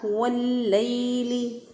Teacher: तो हमने इसको पढ़ा वल्लैली, लाम ज़बर या लई, या साकिन से पहले वाले हरफ पर देखें ज़बर है तो ये यालीन है। यालीन को नरमी से, आसानी से, जल्दी से पढ़ते हैं, लंबा नहीं करते उसको, उस पर मद नहीं करते, उसको खींच के नहीं पढ़ते।